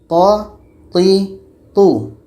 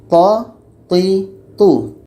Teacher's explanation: Thaknya pada ujung lidah menempel dengan pangkal gigi seri atas. Ujung lidah menempel dengan pangkal gigi di atas.